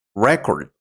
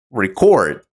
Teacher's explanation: when you stress the first syllable it becomes a noun record but if you stress the second syllable it's a verb record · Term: word stress